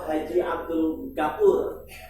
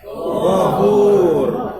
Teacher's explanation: Makhrajnya berada di adnal halq, tenggorokan paling atas.